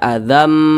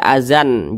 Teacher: Idam bunah maka tanwin berjumpa dengan huruf mim hukumnya adalah idghamunah cara bacanya dengan cara memasukkan kemudian juga didengungkan apa yang dimasukkan bunyi tanwin ini masuk ke huruf mim